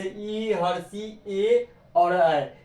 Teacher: जिन स्वरों के उच्चारण में जीभ का अग्रभाग काम करता है उसे हम अग्र स्वर कहते हैं